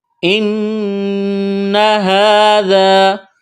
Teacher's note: حمزہ کو نون کے ساتھ ملائیں گے، نون مشدد ہے، آواز ناک میں چھپائیں گے، غنہ کریں گے۔ ان ھذا، ہا کے اوپر کڑا زبر ہے، ایک الف کے برابر کھینچنا ہے، ذال کو نرم کرنا ہے، الف سے پہلے زبر ہے، الف مدہ ہے، ایک الف کے برابر کھینچنا ہے۔